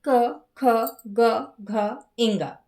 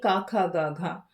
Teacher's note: अब कंठ का मतलब होता है गला अर्थात थ्रोट। जब बोलते समय आवाज गले से निकलती है तब जो वर्ण बनते हैं उन्हें कंठ वर्ण कहते हैं। बोल के देखेंगे, क ख ग घ इंगा।